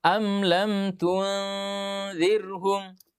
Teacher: Caranya am lam tun. Jadi bersuara di hidung tapi posisi lidah kita sudah siap-siap melafalkan huruf zal dan jangan terlambat